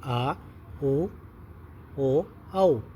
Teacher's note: जिन स्वरों के उच्चारण में जीभ का पश्च पिछला भाग उठता है उन्हें पश्च स्वर कहते हैं।